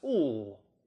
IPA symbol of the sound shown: l